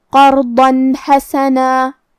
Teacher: حا حروف الاظہار میں سے ہے اور اظہار کا معنی ہے ظاہر کرنا اور کیونکہ تنوین کی اصلیت نون ساکن ہے تو ہم یہاں تنوین ظاہر کریں گے اور اسے نون ساکن پڑھیں گے اور بغیر غنہ سے یہ حکم کو ادا کریں گے